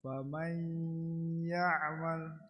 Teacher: Nun sakinah mudghamah fi ya'il maftuhah bi gunnah harokatain.